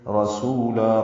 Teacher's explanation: من بعدی عین وسط حلق سے نکالیں گے، ہی مد صلہ ہے، 2 حرکات اب لمبا کریں گے۔ رسولا را پر پڑھیں گے، سین باریک ہے